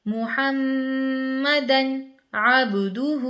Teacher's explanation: محمدن کے بعد ہم بالکل بھی نہیں رکے ہیں، نہ ناک میں اتنی آواز گئی ہے، بالکل فوراً سے نون ادا کر کے ہم آگے کا لفظ ہم نے پڑھ دیا ہے کیونکہ یہ اظہار کا قاعدہ اس طرح پڑھا جاتا ہے، محمدن عبدہ۔